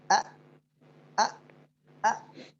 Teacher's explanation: هذا المخرج أقصى الحلق يخرج منه حرفان وهما الهمزة والهاء